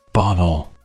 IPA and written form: ˈbɒɾl̩ (bottle)